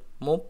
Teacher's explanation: Muf, ingat makhraj huruf fa, gigi seri atas menyentuh bibir bawah bagian dalam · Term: huruf fa sukun